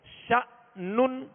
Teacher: ش جب کہیں گے تو زبر ہے چونکہ شین کی، اور حمزہ میں جھٹکا دیں گے، آواز اور منہ کھول کر ادا کریں گے.